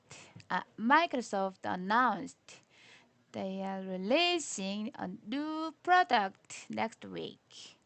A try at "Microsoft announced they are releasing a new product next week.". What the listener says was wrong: Don't pause after releasing. No pause here.